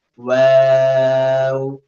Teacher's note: ওয়াও is প্রনাউন্সড when two lips are round